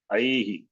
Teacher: this Visarga is preceded by E. Therefore, it will get the sound E. A he. I he.